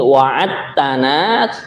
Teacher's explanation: dal ketemu dengan ta. Nah, ini langsung diidgamkan nggih. Nah, langsung suaranya itu bunyinya ta yang bertasydid nggih.